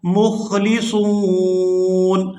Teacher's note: وَنَحْنُ لَهُ مُخْلِصُونَ، یہاں پر وقف کریں گے تو وقف کی صورت میں نون جو ہے یہ ساکن ہو جائے گا